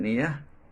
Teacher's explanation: this sound starts at e and glides slowly too as in near [Music] tear as in two tier or